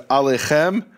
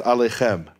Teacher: you had Jews who pronounced the Ayin the same way I do, the same as an Aleph